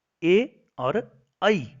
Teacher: ए और ऐ इन दोनों का उच्चारण स्थान कंठ तालु अर्थात ये दो स्थान माने जाते हैं, कंठ और तालु दोनों स्थानों से इनका उच्चारण होता है।